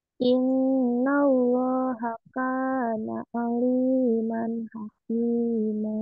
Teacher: Inna allaha kana kana tahan dulu, inna allaha, tahan dulu nunnya, ada tasdid, tahan agak lama